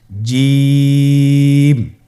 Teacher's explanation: এর মাখরাজ হলো জিহ্বার মধ্যখান তার বরাবর উপরের তালুর সঙ্গে লাগিয়ে উচ্চারিত হয় · জিম হরফটি বারিক হরফ, এটা উচ্চারণ করতে হবে 3 আলিফ টেনে।